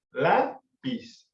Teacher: La fuerza la tiene la primera sílaba, que es la, y es la penúltima sílaba. En el caso de lápiz, que no termina en NS o vocal, sí se acentúa. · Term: palabras llanas